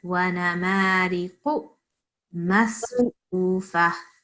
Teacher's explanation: it's the Qaf. The sound should emanate from the back of your throat.